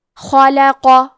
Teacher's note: پھر حرف القاف کو موٹی آواز میں پڑھیں گے۔